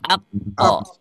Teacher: Ya, jadi ingat, kalau huruf kaf dia punya sifat syiddah. Kalau qaf dia tidak punya hamas, ya, tapi dia punya qalqalah. Setelah syiddah maka keluarkan qalqalahnya.